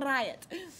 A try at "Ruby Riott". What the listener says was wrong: So close, but you're just moving your tongue on the top of your mouth.